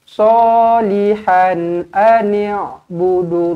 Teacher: Salihan tanwin selari bertemu dengan hamzah, di sini dibaca dengan jelas dan terang. Izharu halqi.